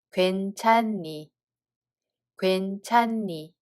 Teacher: Hieut batchim doesn't have a sound value in this case. It's removed. Therefore we just pronounce only first ㄴ sound batchim.